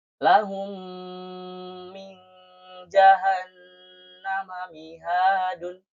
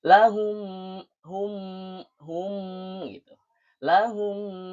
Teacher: Jadi mim yang dua disatukan menjadi satu ee dan ditasydidkan. maka kita dibacanya harus mendengung. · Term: idgham mutamasilaiin